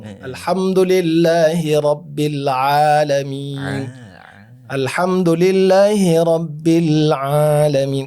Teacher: Bukan huruf hidung karena ain adalah huruf halaq. Bukan khayshum.